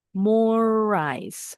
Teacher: Jadi huruf R yang pertama ini bacanya di R yang kedua aja.